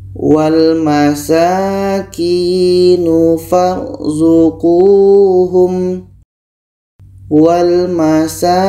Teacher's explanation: 'Qi' ini dibaca panjang karena ada sukun ya yang didahului oleh huruf dengan kasra, dibaca dua harakat panjang.